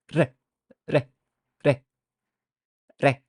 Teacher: And produced by tapping the tongue of or the tip of the tongue once quickly behind the upper teeth. So your tip of your tongue goes at your upper teeth and just like taps it. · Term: tongue flap